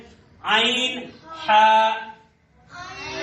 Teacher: عین ہا درمیان سے ادا ہوتے ہیں حلق کے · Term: حلق کے درمیان